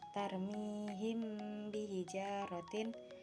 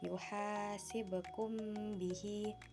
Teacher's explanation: Pengertian ifa syafawi adalah apabila mim mati bertemu dengan huruf ba lalu pengucapan mim disamarkan atau menutupi suara bacaan dan disertai dengan gunah atau dengung